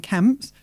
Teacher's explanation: That P gets gobbled up, doesn't it, by what's next?